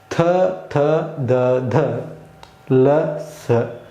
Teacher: ಥ, ಥ, ಧ, ಧ ಅನ್ನುವಾಗ ನಮ್ಮ ಹಲ್ಲು ಏನು ಮಾಡ್ತಾ ಇದೆ? ನಮ್ಮ ನಾಲಿಗೆ ಹಲ್ಲಿಗೆ ಬಿಡ್ತಾ ಇದೆ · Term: ದಂತ್ಯವರ್ಣಗಳು